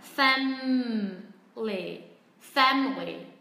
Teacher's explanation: đặc biệt là người Mỹ phát âm, các bạn sẽ thấy từ này gần như biến mất âm tiết thứ hai. Tức là nó sẽ chỉ còn hai âm tiết là family.